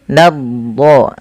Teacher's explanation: tebalkan di lafal huruf do-nya ya, karena dia huruf do punya sifat isti'la dan itbaq